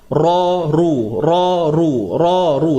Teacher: Ra baris atas tebal. Ra baris depan tebal. Ru. Ra, ru.